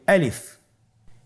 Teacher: গলা এবং মুখের শূন্যস্থান হতে আলিফ হরফটি উচ্চারিত হয়।